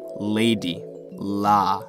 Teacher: the L sounds which is where your tongue touches part of your mouth and the air goes around it this one is the regular l sound like in Lady LA